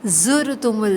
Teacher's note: زا پہ بھی سختی ہوگی، سیٹی والا حرف ہے